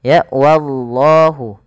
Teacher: ini wa-nya ditipiskan dulu, baru lafal Allah tebal. Jangan langsung wallah, tapi dia wallah. · pada lafal Allah dipanjangkan 2 harakat karena ia lafzul jalalah